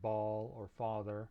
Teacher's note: this character represents the ah sound and that's a low back unrounded vowel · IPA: ɑ